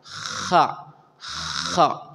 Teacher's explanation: ketika mengucapkan huruf kha itu pas persis di atas tenggorokan.